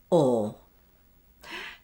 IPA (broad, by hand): ɔ